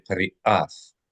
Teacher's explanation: Now, if we pronounce the aleph, it would be qari'ath. So aleph is the sound of the holding and releasing of the glottis. It's a little flap in your throat.